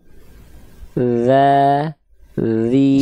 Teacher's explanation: Ini jadi sebenarnya giginya nggak ngegigit, tapi fokus kita ujung lidah disentuhkan ke ujung gigi seri atas. Kalaupun gigi seri bawah kena lidah kita, bukan untuk ditekan, bukan untuk mencapit. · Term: huruf dzal